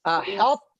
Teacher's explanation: The itbaq of the ta is still there.